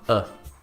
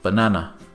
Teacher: This is the most common sound in English, and it is what we call the sound of the schwa. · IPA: ə